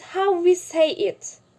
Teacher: I stress the word how, because my main point here is the way that we are speaking in English.